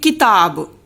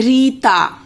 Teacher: छोटी की मात्रा कहते हैं क्योंकि जल्दी बोली जाती है बड़ी की मात्रा कहते हैं क्योंकि देर तक बोली जाती है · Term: मात्रा काल